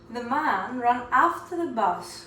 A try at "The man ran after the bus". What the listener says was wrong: Okay, now that after is a different A altogether. It's a long A. So there's 3 A's or more in English. So you want to say after.